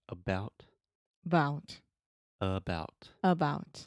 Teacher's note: it's really short it's really soft I'm reducing the stress and I'm putting the stress on the belt so the absence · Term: schwa